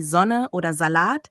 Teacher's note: Ein weiteres Problem ist die Aussprache des Slauts am Wortanfang. In deutschen Wörtern wie Sonne oder Salat wird das S oft schärfer ausgesprochen als in vielen anderen Sprachen